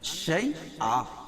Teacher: 2 زبر کی تنوین پر وقفہ کر رہے ہیں تو ایک زبر کے قائم مقام الف پڑھیں گے اور دوسری زبر اپنی حالت پر باقی رہے گی، جیسے شیئن سے شیئا۔